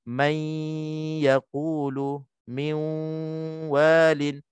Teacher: maka hukumnya idgham ma'al gunnah. Cara bacaannya dengung 2 harakat.